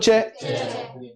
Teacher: जीभ तालू पर लग रही है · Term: तालव्य